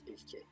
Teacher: I think that does get palatalized, that K in Turkish.